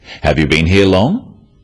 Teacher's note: questions that start with have you are yes no questions so they have a rising tone